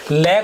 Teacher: निम्नलिखित में से पार्श्विक व्यंजन, लय को पार्श्विक व्यंजन कहते हैं, क्योंकि इसके उच्चारण में हवा जो है जीभ के दोनों बगल से पार्श्व से निकल जाती है